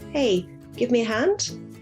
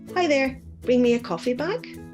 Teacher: requests like questions can have a rising intonation in English, even if they're not always formulated as a question